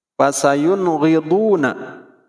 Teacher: Nun mati menghadapi ghin tidak boleh didengungkan, tetapi cara membacanya hukumnya menjadi izhar, yaitu singkat, padat dan jelas pengucapannya.